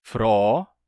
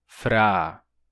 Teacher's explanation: Esse som varia entre os falantes de Hunsrickiano. Ele pode ser pronunciado como O ou como A. Tem os dois sotaques, fro, fra, or, ar. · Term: O longo e aberto